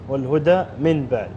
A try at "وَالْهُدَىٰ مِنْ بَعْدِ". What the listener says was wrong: اي بس وصلها انت تفصلها